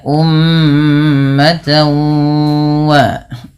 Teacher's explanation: Karena bertemu dengan huruf wau, maka suara tanwinnya dimasukkan ke huruf wau. Dan ini kita istilahkan dengan nama idgham. · Yang mana cara membacanya adalah memasukkan bunyi tanwinnya kepada huruf waw.